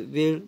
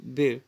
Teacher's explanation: वचा उच्चार ब असा होतो.